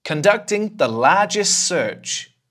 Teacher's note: Do you notice that the /t/ wasn't there? I kind of threw that away because 'largest search' is a bit too much for the mouth.